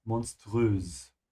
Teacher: in this case, it's not a sh, monströs. Because it comes from the word monster, yeah? Which comes from English.